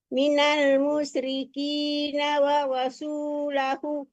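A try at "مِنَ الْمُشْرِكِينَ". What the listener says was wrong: minal musyriki, keraskan shinnya ya. Minal musyrikina wa rasuluh. sinnya kurang keras. Yang pertama sudah keras, jangan mus ya, jangan sin ya.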